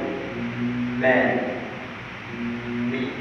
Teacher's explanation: Angin keluar dan dia akan ditahan oleh bibir. Dalam masa yang sama ada juga angin yang keluar daripada hidung. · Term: huruf mim